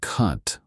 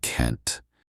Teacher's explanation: Americans typically say can't with a flat nasal sound. In contrast, the British say can't, which sounds rounder and more drawn out.